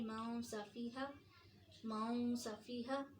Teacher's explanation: سین بھاری حروف میں سے نہیں ہے، اس لیے بہت زیادہ اس کو نون کو نہیں چھپائیں گے